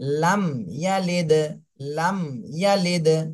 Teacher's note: আপনি যদি মিমটাকে ধরে রাখেন, লাম গুন্না হয়ে যাবে, লাম গুন্না, তাহলে এখানে গুন্না করা যাবে না, ধরে ছেড়ে দিতে হবে। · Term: স্পষ্ট করে